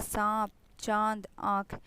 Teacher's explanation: उनके उच्चारण में हवा नाक और मुंह दोनों से बाहर निकलती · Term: चंद्रबिंदु